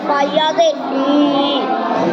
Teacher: پہلے فا کے نیچے زیر ہے اس لیے یا مدہ ہوگی یا مدہ کو ایک الف برابر کھینچ کر پڑھیں معروف پڑھیں مجھول آواز سے بچیں